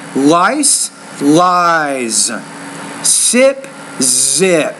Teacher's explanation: not pronouncing the Z with enough vibration